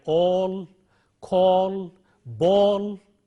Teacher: then we have a rounded vowel which is long o